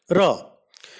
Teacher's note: Ra is a voiced post-alveolar approximant. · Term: approximants